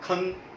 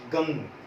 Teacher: जो अनुस्वार की मात्रा का प्रयोग किया जाता है जब बोलते समय तो आवाज नाक से निकलती है